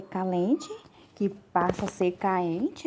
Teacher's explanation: E também a queda do L, essa alteração só foi percebida em um documento de 995, em que o L passa a ser substituído por vogais em hiato